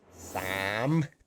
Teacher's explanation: The rising tone in Thai, it goes down a little, and then you need to go up. So your throat kind of closes as it goes up.